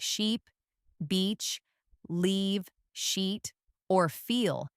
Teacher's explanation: your tongue should be high and forward in your mouth. This is a sustained sound. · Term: long e sound